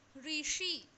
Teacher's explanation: मूर्धन्य श कहते हैं, मूर्धा से उच्चारण किया जाता है